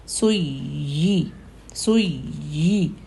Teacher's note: یا پر تشدید ہے اور یا زبان کے سینٹر سے نکلتا ہے، اور یا کے لیے زبان کے سینٹر میں جب تشدید آتی یا کو تو زبان کے سینٹر میں تھوڑا سا پریشر آتا ہے۔